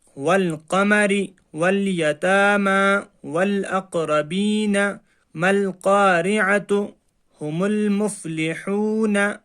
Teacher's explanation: لام پڑھا جا رہا ہے اور الف کو ہم چھوڑ رہے ہیں۔ میم لام زبر مل، قاف الف زبر قا، مل قا، را زبر ری، مل قاری، عین زبر ع، مل قارع، تا پیش تو، مل قارعۃ، ہا پیش ہو، میم لام پیش مل، ہمل، میم فا پیش مف، لام زر لی، ہم المفلی، حوا پیش حو، نون زبر نا، ہم المفلحون۔ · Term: حروف قمری